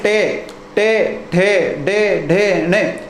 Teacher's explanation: जिह्वा पहले उल्टी होगी और उल्टी होकर कहाँ गोल घूम जाएगी जिह्वा। जिह्वा गोल घूमकर ऊपर मूर्धा वाले भाग पर लगेगी